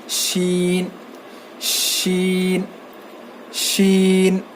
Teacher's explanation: زبان کے بیچ کے حصے سے شین ادا ہوتا ہے